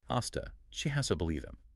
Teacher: They simplify it by shifting that voiced Z to its unvoiced partner, the S sound. Giving us hasta.